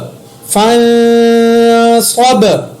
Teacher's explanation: فا زبر نون، فن، صاد زبر با صب، فن صب، یہاں پر میں نے نون ساکن کے اوپر اخفا کیا، صاد کو موٹا پڑا، با کے اوپر قلقلہ بھی کیا کیونکہ نون ساکن کے بعد صاد اخفا کا ہے۔